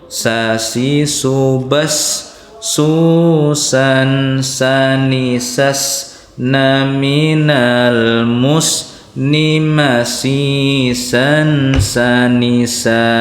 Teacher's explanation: Tempatnya di ujung lidah disentuhkan dengan pangkal gigi seri atas. Jadi ujung lidahnya disentuhkan dengan pangkal gigi seri atas. Nah, jadi ujung lidah, pangkal gigi seri. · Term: huruf sin